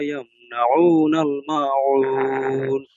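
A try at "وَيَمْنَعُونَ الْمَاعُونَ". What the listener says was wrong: এই যে ওয়ায়ামনাউনাল মাউন, এগুলা হয়ে যাচ্ছে, কিন্তু আপনার এই প্রত্যেকটা এই জাল একটু শক্ত হয়ে যায়, এটা একটু নরম করবেন, ওই যে ওভাবে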